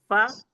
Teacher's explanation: फ ऊपर के दांत और नीचे के होठ का गीला हिस्सा